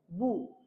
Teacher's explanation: বা উচ্চারণ হয় হলো দুই ঠোঁট থেকে